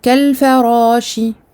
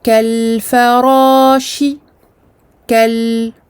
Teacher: un temps de bayniyah qui est moitié moindre que le temps de rakhawa, mais qui est là. C'est un écoulement du son partiel.